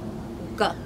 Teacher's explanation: It's the G sound. It's made with the back of our tongue up and we pretend to be gargling as we make that sound.